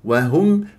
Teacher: ولا تسحب ضمه الهاء الى الميم